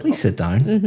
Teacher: But if I said, please sit down, my intonation is going up. It sounds completely different, but the words are exactly the same.